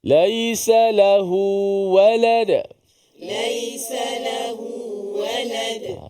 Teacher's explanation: Lahu tu ada mat lah, dua harakat.